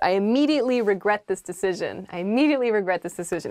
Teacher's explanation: you can say i immediately regret this decision but with kind of like a flat tone to it